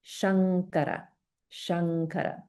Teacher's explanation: we have anuswara combined with ka, which is a kantya or throat sound. So if we think of the nasal sound that corresponds to the ka, ga, ga sounds, it's the nga.